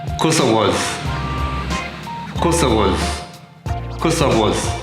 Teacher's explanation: the short form of the word because is cause, and then the z links up to the I, and finally we get the weak form of was using the schwa sound, and it becomes was. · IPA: /wəz/